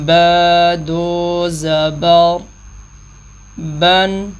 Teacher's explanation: نون کیونکہ اینڈ میں ہے تو نون کی آواز ناک میں جاتی ہی جاتی ہے، تو جب بھی تنوین ہم پڑھیں گے تو تنوین کی آواز ناک میں جائے گی ہی جائے گی۔